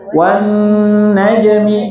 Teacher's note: Gunah itu dilamakan sama. Tapi dilamakannya di mana? Di hidung. Di rongga hidung